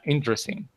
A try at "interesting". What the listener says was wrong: this E doesn't sound, okay? This one. It doesn't sound. So say interesting.